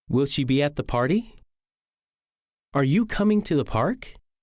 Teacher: Questions that can be answered with yes or no usually end with rising intonation. We call these questions yes-no questions.